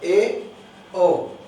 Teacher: जब हम इनका उच्चारण करते हैं तो मुख द्वार आधा खुलता है, ए ओ, आधा मुख खुलता है।